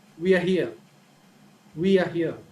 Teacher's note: the falling tone right we are here we are here so in the beginning the tone is high but as we move forward the tone is lower